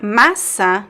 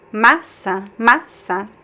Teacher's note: The stress is in the first syllable.